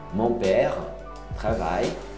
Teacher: Não é travaille. Não pronuncia nem o L nem o E.